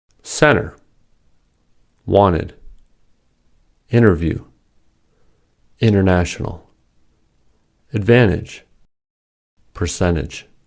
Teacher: These are examples where T is silent after N.